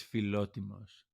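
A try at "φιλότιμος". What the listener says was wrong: Then no R, no roll. Philo.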